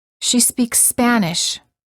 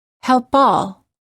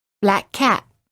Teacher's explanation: When the final consonant of one word is the same as the first consonant of the following word, pronounce the consonant only once. Do not pause between the sounds, but just lengthen the sound a little bit and say it with a little bit more energy. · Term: Linking consonant to same consonant